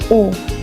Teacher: Pada huruf U, posisi lidah terletak pada bagian belakang. Bentuk mulut bundar, kemudian tertutup.